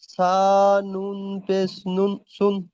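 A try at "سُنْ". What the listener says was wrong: নুনকে টান দেন, সা নুন পেশ সুন। হ্যাঁ, নুন তিন আলিফ পরিমাণ টান, তিন আলিফ পরিমাণ, এমন ভাবে টান দিয়ে পড়লে শুদ্ধ হবে ভাই।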